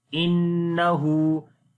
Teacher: Nun has a shadda sign, we make gunna